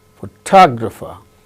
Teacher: the case of the second word photographer second syllable gains stress